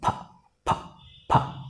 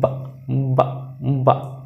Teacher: ফা সাউন্ড এবং বা সাউন্ডের কি পার্থক্য। একটি হচ্ছে ভয়েসলেস আর এটি হচ্ছে ভয়েস সাউন্ড। তো ওকে মাই ডিয়ার স্টুডেন্টস, যেখানে তোমরা পি পাবে সেখানেই উচ্চারণ করবে ফা ফা, জাস্ট মুখের অগ্রভাগ থেকে, আর যেখানে বি পাবে সেখানে উচ্চারণটা এখান থেকে হবে বা বা বা।